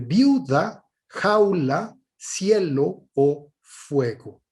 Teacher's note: En todos estos casos, si ustedes observan en estos diptongos, lo que tenemos son sílabas tónicas en la penúltima sílaba